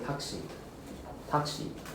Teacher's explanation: But the u is actually silent, so we just say taxi. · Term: devoicing of vowels